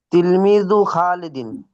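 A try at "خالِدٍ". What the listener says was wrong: খালিদিন না বলে খলিদিন বলি।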